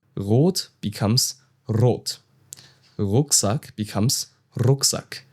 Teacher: Now here in Bavaria, where I live, we tend to roll the R.